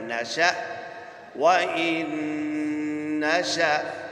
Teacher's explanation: یاد رکھیے حمزہ ساکنہ ہے تو جھٹکا دے کر پڑھیں گے۔ نرمی کے ساتھ پڑھا تو یہ ادا نہیں ہوگا، یہاں حرکت پیدا ہوگی، یہ الف مدہ پیدا ہوگا، لہذا جھٹکے کے ساتھ پڑھنا ہے۔